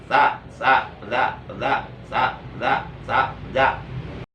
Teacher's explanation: huruf sa maupun huruf jal itu tempat keluar hurufnya sama-sama min wastil lisan, sama-sama dikeluarkan dari ujung lidah